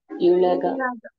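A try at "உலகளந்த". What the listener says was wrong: యు కాదండి, ఊ అనాలి.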